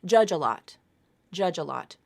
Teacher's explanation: Okay, that's the link. That final J sound moves over to the beginning of the next word.